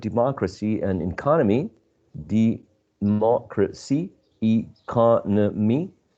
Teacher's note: we have 4 syllables. But anyway, we need to stress the third syllable from right to left.